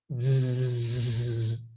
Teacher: Z sound is a voiced sound, so the vocal cords are engaged.